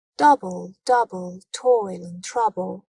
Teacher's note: it starts with a stressed syllable and is followed by an unstressed syllable the pattern is dumbed pattern so like Double Double Toil and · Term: trochee